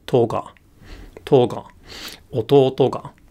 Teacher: the particle attaches low so it goes from high to low · the pitch stays high until the end of the word, and then it drops.